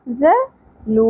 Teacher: آگے ہے ذال نرمی سے ادا ہوگا. ذلو واو ساکن حرف مدہ ایک الف کے برابر کھینچنا ہے